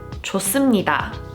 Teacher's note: Hieut does not make a sound, but it tenses the 시옷. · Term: double consonant